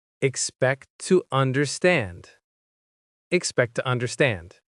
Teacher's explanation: The t at the end of expect joins with to. So there's no pause. It flows smoothly as expect to understand. · Here, the word to is reduced — instead of to it becomes tuh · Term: linking